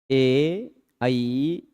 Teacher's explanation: इसमें कंठ और तालु दोनों का प्रयोग है।